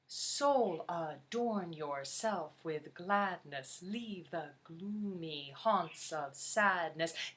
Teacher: it is trochaic which means the accent is on every other beat starting with the first syllable of each line